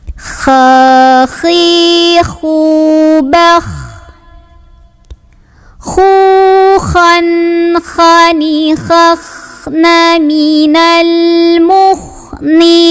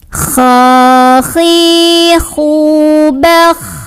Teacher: Jadi kayak ngorok tapi nggak berlebihan ya. Kha, naik pangkal lidahnya. Huruf tebal dibantu pangkal lidah naik. Keluar dari tenggorokan paling atas. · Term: huruf kha